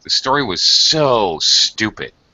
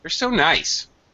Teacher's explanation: I frequently add a lot of emphasis and stress and high-pitched intonation when I use so.